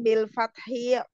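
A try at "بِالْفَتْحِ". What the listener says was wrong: qabla tapi enggak ada fathi enggak ada e-nya lam syaddah tanwin bil fathi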